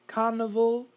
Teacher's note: a schwa here between the v and the l